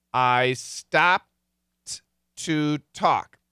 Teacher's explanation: a stop sound and the t is a stop sound so I'm stopping with my lips the p and inside my mouth I'm hitting the T I stop so I'm doing both of these stop sounds at